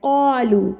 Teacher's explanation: قاف کو ہم پر کر کے پڑھیں گے کیونکہ یہ حروف مستعلیہ میں سے ہے، اور یہ قاف ہر حال میں پوری پڑھا جائے گا، چاہے زبر کے ساتھ ہو، چاہے زیر کے ساتھ ہو، چاہے جزم کے ساتھ، کہیں پر بھی اگر یہ قاف آپ کو دکھ جائے تو آپ نے اس کو پر کر کے پڑھنا ہے.